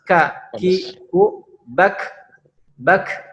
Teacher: Ka itu agak ke atas sedikit dari huruf qaf, menempelkan pangkal lidah ke langit-langit. Dengan mengucapkannya itu hamas. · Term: huruf ka